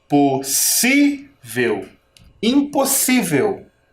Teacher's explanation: Ela tem 4 sílabas. Quando eu falar, vocês vão perceber que ela é uma paroxítona. Tem a penúltima sílaba tônica, tá? E ela é terminada em L.